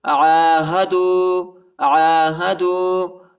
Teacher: عین کے اوپر جو ہے کڑا زبر آیا ہے، اس کو ایک الف کی مقدار تک کھینچیں گے